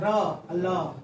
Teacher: दंत मूल वतली जैसे र और ल र और ल में दंत लगता है यानी दांत टच करके निकलेगा।